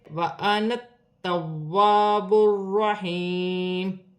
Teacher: تبدیلی نہیں ہوگی، جیسے لکھا ہے ویسا ہی پڑھا جائے گا، تا مشدد ہے، واو مشدد ہے، دونوں کو جماؤ کے ساتھ ادا کیا جائے گا